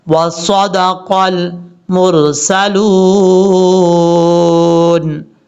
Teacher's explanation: یہاں صاد فل موت پڑھیں گے کیونکہ حروف مستعلیہ میں سے ہے